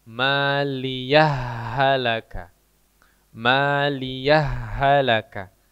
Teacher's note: jadi antara H pertama dan H kedua itu digabung jadinya Jadi digabung yang pertama tadi diop ya Kemudian yang kedua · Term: idgham